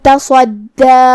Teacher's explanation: کلمت تصدی میں یہاں حرف الصاد ہے، صاد حروف التفخیم میں سے ہے تو ہمیں اسے منہ پھلا کے بھاری آواز میں پڑھنا ہے۔ دال پہ تشدید ہے تو 2 حرف کے برابر حرف الدال کو پڑھیں گے۔